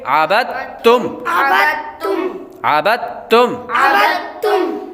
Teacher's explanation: اب ہجے کرتے ہوئے با کو دال اور تا کے ساتھ ملائیں گے، لیکن جب آواز نکالیں گے، جب ہم اس کو روانگی کے ساتھ پڑھیں گے، رواں پڑھیں گے، بغیر ہجے کے پڑھیں گے، تو با ڈائریکٹ ہی تا کے ساتھ ملا کر پڑھا جائے گا